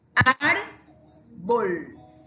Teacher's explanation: El acento lo tiene aquí en la penúltima.